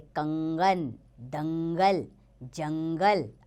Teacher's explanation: अनुस्वार, इनका उच्चारण नाक से होता है